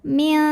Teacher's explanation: Karena huruf kafnya ini makhrajnya jauh dari nun, maka ini bunyi angnya besar. · Maka nun sukun dibunyikan samar-samar menuju kaf disertai dengungan. Jadi ini siap-siap ke kaf ya. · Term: ikhfa ab'ad